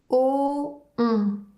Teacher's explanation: Pour le son ON, la bouche prend la même forme que pour le son O et ensuite le son devient nasal.